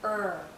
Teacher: not touching the back of our bottom front teeth for IR the tip of our tongue is actually curled backward and as it curls back the central part of her tongue